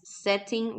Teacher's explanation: if you pronounce the T like a tea this is more of uh London or UK pronunciation